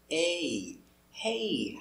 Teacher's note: hey pronunciation and intonation is important we're making a sound AE it's longer it's made of two sounds a and E